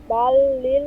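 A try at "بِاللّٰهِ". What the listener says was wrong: আপু বাল্লিল হবে না বা জবর বা হবে বালিল্লাহ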